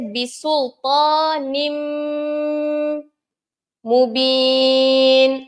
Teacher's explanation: pertama ini perkataan yang kedua cara bacaan dia idgham maal gunah memasukkan yang huruf pertama ni ke dalam huruf yang kedua dengan dengung